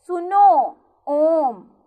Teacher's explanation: इनके उच्चारण में ह्रस्व स्वर से तिगुना समय लगता है। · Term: प्लुत स्वर